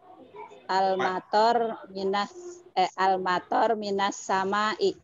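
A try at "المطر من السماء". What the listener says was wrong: Jangan bisu di akhir. Kalau tidak wakof, kalau tidak sukun jangan dibaca sukun. Misalnya kalau ro itu tidak sukun jangan tor gitu. Kan kalau misalnya tidak sukun maka pilihannya apa? Toru, apa toro, apa tori gitu.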